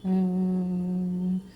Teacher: प्लुत स्वर, जिन्हें तिगुना समय लग रहा है।